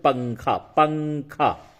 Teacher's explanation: तो पंखा में नाक में आवाज जाकर के छुपाते हैं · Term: इखफा